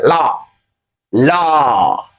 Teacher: ला एक हिंदी वर्णमाला में एक ऐसा वर्ण है जो पार्श्विक व्यंजन है। ला का उच्चारण करते समय हमारी जीभ, हमारी सांस जीभ के बगल से होकर गुजरती है